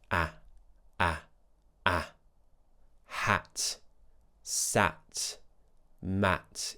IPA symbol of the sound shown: æ